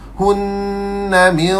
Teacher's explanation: Berhenti pun wajibal gunnah, sambung pun wajibal gunnah. Dua-dua dengung, dua harakat.